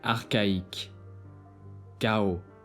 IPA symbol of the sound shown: k